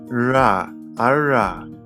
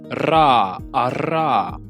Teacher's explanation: Beim englischen „R“ zieht man die Zunge nach hinten, ohne dass die Zungenspitze irgendwo berührt.